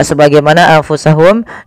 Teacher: Kemudian di sini ada nun mati bertemu fa sebagaimana anfusahum ya sebagaimana anfusahum yaitu bagaimana kita membacanya kita membacanya menyamarkan nunnya kepada huruf fa